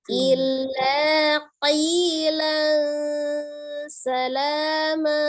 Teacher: pas pengucapan tanwinnya itu kita sudah membentuk makhraj huruf sin